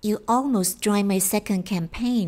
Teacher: joined 结尾的 d 也是失去爆破没有读出来， second 结尾的 d 也是失去爆破没有读出来